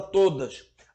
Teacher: a penúltima sílaba das duas que compõe a palavra todas é pronunciada de forma mais intensa que a outra sílaba que compõe a mesma palavra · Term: paroxítona